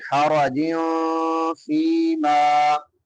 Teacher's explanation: نون تنوین کے بعد فا ہے تو یہاں پہ اخفا کریں گے